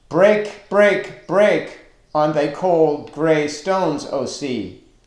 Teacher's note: These are all stressed syllables, one after another.